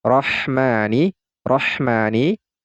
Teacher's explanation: ini huruf ro adalah salah satu dari huruf Syamsiyah maka ini suara lamnya kita leburkan kepada huruf ro sehingga tidak lagi terdengar suara lam sukunnya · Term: idgham syamsiah